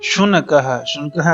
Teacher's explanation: अह की मात्रा, छोटा अ और विसर्ग, जिसे हम आह बोलते हैं